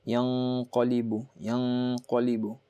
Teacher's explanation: This is your gunna, because after nun sakin you have a qaf, which is one of the 15 letters right here of ikhfa. So light nasal sound.